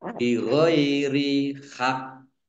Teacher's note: kofnya ini ada kof tasdid dan kof sukun berarti kofnya dibaca double dua dan dipantulkan, ya dibacanya hak ke, jadi ditekan ya biar tampak double.